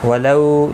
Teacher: لو واولین ہے، تھوڑا نرمی کے ساتھ کھینچ کر ادا کریں گے